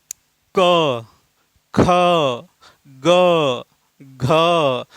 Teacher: क, ख, ग, घ यानी जब आप इन व्यंजनों को उच्चारण कर रहे हैं तो इनके साथ अ की ध्वनि अंतर्निहित या छुपी रहती है